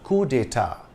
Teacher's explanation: In this case, it's the final T that's silent. In English, it's coup d'état with an emphasis on the ta. The French pronunciation is slightly different.